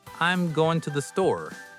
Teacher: In English, we emphasize the important words like going and store and we hide the small words like to andthe. · So instead of "I am going to the store," it sounds like "I'm going to the store." The words to and the become very small and lazy.